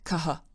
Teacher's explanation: people do is rather than pronounce it as a ha sound they just pronounce it as an h and then add a an echo of the preceding vowel to it